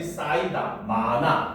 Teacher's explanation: 히읗 뒤에 모음으로 시작하는 어미와 정미사가 결합을 되는 경우에는 히읗을 발음하지 않는다는 거죠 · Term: 히읗 탈락